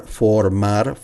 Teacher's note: the R is soft R because it's in between the word and it's just one R.